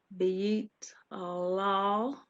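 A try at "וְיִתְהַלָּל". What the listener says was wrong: Halal. Maybe I'm just not hearing it all because I was listening for that H sound.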